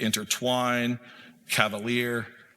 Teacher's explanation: An anapest is a three-cllable word or three syllables in a row consisting of two unstressed syllables followed by a single stressed syllable.